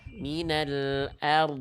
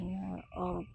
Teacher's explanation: Dod itu kan rohwah, dia mengalir suara